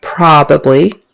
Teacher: make sure the accent is on the first syllable probably and that it's an a short o for the O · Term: accent on the first syllable